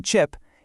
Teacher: The ch sound, ch, like in chip, it starts like a t and then releases like a sh. It's voiceless.